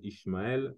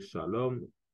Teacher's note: ils prononcent souvent la lettre S comme étant SH. Par exemple, Ismaël, ils vont dire Ishmaël, Salam, ils vont dire Shalom.